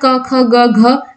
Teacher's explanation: क वर्ग के पूरे जितने भी सारे वर्ण होते हैं इनका उच्चारण स्थान क्या होता है कंठ होता है